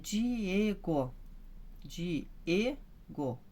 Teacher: então o E que é o forte, é a sílaba tônica